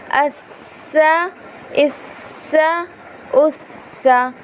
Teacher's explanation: سین جو ہے وہ سیٹی والا حرف ہے ، تو ہمیں کوشش کرنی چاہیے کہ سین کو ادا کرتے